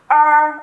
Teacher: đây là một cái vận mẫu yêu cầu phải uốn lưỡi lên khi đọc nhá